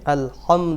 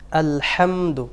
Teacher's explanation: দুইটা ভুল হয়েছে, সেটা হলো আলহামদু, হার মধ্যে খুব বেশি চাপ দেওয়া হয়েছে, আল হামদু হয়ে গেছে। হার মধ্যে একটি গুরুত্বপূর্ণ সিফাত হলো হামস হওয়া, বাতাস চালু হওয়া।